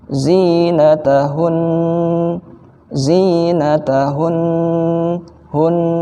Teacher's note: jadi ada dengungnya ya di akhir itu ada dengungnya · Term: huruf nun